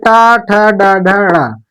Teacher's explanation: जो टा ठ डा ढ ड़ा, ये हमारे हैं मूर्धा से बोले जाते हैं